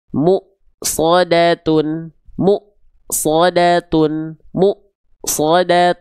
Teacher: Ada portalnya dulu ya. Karena ada portal Hamzah yang artinya dia tertahan suaranya. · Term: hamzah sukun